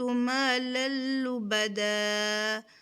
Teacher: ہم ادغام تو کریں گے یعنی ملائیں گے تو صحیح، لیکن رکیں گے نہیں، غنہ نہیں کریں گے